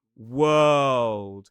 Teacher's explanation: Now, this one's quite interesting because we move from the dark L into a D sound which is actually on the alvola ridge. So, people get a bit confused as to why we do release that sound.